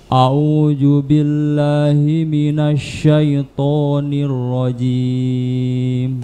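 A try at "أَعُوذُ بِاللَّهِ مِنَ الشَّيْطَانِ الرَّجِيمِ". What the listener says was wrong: Jadi jangan ju ya. Zu. A'udzu.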